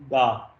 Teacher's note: le da rétroflexe qui est fait avec la langue en arrière du palais